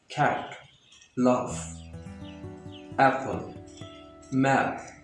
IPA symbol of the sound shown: æ